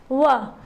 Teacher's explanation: व, तो यहाँ दांत, नीचे वाला जो दांत है, और ओष्ठ, होठ, इसके माध्यम से व का उच्चारण हो रहा है। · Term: दंतोष्ठ वर्ण